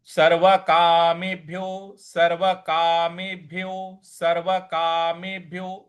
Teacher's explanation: यहां जो भ है उस पे हमको हल्का सा बल लगाना है